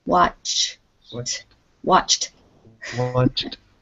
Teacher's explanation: you have to go from a ch sound to a t sound